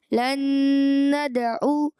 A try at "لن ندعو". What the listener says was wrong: لن ندعو، عین کی آواز کلیئر کریں.